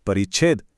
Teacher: अगर छ से पहले कोई छोटा स्वर हो, जैसे परी में ई है, तो बीच में एक च की गेस्ट एंट्री हो जाती है और शब्द बन जाता है परिच्छेद।